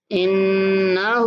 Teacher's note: نون پر غنہ اور ہا کو کھینچ کے پڑھنا ہے